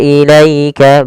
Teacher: Kemudian pada lafal ilaika di sini ada bacaan lin, yaitu bacaan yang lembut, adanya fathah bertemu dengan ya sukun.